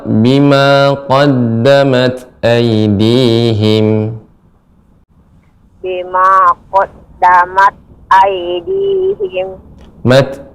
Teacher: tak yang sukun, ketika sukun maka akan terdengar suara hamas, ya, sedikit ada hamas.